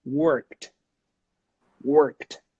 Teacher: No voice. No vibration. So we should pronounce it as a T.